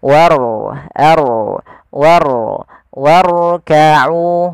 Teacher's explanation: Nah, bukan dibaca seperti ini. Warka'u itu ro-nya tipis, tapi diangkat ujung lidahnya untuk menebalkannya. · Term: ro tafkhim